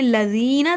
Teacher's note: ذی کو لمبا کیا کیونکہ یہ حروف مد ہے